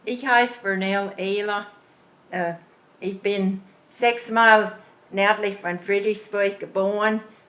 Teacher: the accent definitely sounds more Texas with the sort of musical kind of tone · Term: Texas intonation, twang